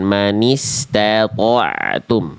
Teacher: Tohnya tebalkan, tanya tipiskan, ainnya tipiskan.